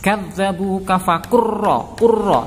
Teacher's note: Ada lam sukun bertemu ra. Cara membacanya adalah dimasukkan ke huruf ra-nya langsung tanpa ada membaca lam. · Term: idgham mutaqaribain